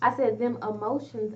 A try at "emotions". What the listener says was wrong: did, you absolutely did not say E. Emotions.